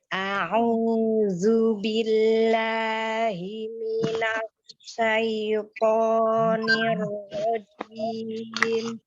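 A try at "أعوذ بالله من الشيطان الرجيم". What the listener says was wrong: Ya.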